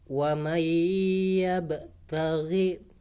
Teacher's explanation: Contoh idgham bi gunnah, wa may yabtaghi. Jadi nggak boleh dibaca waman yabtaghi ya, tapi dengung.